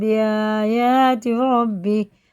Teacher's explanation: نون نہیں پڑھا جائے گا، میم پڑھا جائے گا اس نون کی جگہ، اور با آ رہا. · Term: اقلاب کا قاعدہ